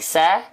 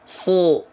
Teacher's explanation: Sin senyum buka mulut dan pangkal lidah nggak naik sa. Kalau shad buka mulut tidak senyum dan pangkal lidah naik.